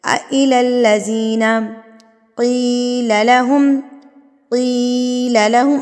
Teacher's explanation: اب میں کی کو لمبا کر رہی ہوں، کیوں کر رہی ہوں کہ زیر کے ساتھ یا ہے، ٹھیک ہے، زیر کے ساتھ یا ہے۔